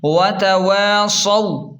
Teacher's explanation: واو مدہ کو ایک الف کے برابر کھینچیں اور واو لین کو جلدی اور نرمی سے پڑھیں